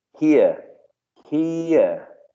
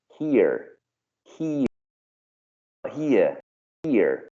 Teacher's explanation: when you hear a speaker using received pronunciation, there's a high probability that you can hear a diphthong here, here, with the final schwa. Whereas in speaker using General American, you might hear a monophthong here